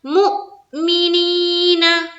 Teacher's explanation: मी को जो है जल्द पढ़ेंगे, नी में खींचना है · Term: या मद्दा